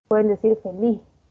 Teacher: la S generalmente no andina se aspira, es decir, que suena en la laringe esa S como una ja laringe, ¿no? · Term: aspirar ese sonido S